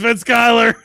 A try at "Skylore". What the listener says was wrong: Skylore. It's an O instead of an A.